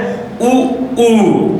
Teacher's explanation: तो हमारा मुख गोलाकार हो रहा है तो उ उ आपका वृत्त मुखी के अंतर्गत रखा जाएगा और